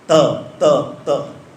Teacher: त में दांत के साथ जीभ जुड़ी